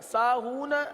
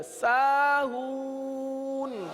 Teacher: آخر میں نون کو ظاہر کریں، قلقلہ نہ کریں